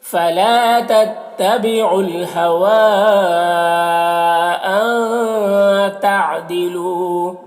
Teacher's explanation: یہاں پر لو واو مدہ ہے، 1 الف کے برابر کھینچ کر پڑھیں گے · ان کے نون میں اخفا ہو رہا ہے، اس کی آواز کو ناک میں چھپا کر پڑھیں گے